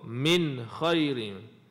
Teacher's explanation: Nun mati ada tanda mati. Jadi kena baca jelas ataupun nyata. Tak perlu dengung.